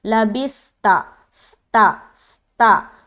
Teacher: جب ادا کرتے سین کو تو ایک سیٹی نما آواز آتی ہے، تو اس میں صفت صفیر پائی جاتی ہے، اس لیے سیٹی نما آواز آتی ہے.